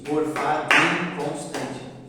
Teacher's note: Então aquele do e aquele in se juntam e formam uma sílaba poética só.